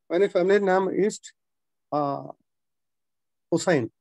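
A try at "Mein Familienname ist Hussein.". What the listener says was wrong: Okay, അവിടെ നാം എന്ന് പറയണം, നാം എന്നല്ല, നാമ കറക്റ്റ് ആയിട്ട് പറയണം, നാമ.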